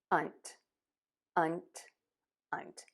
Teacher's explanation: And then say that N, touch the teeth, air comes out of the nose, and then as you pull the tongue away from the teeth, air just pops out of the mouth